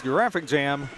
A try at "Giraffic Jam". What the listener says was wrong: I think that's a soft G, a giraffic, like a giraffe. Not a giraffe. Giraffic Jam.